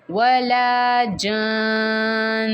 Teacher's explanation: نون مشدد پہ غنّہ بھی ہو رہا ہے تو ہم پڑھیں گے وَلَا جَانٌّ، ایسے ہم وقف کریں گے غنّے کے ساتھ.